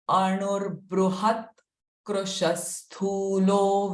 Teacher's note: after Anu, the R sound will come before Bruha